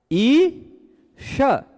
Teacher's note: इ का भी तालु श का भी तालु। और फिर उसके बाद इ का भी वृत्त श का भी वृत्त।